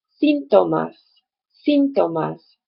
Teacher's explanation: The word in Spanish for symptoms is pronounced síntomas, síntomas. So the stress is actually on the first syllable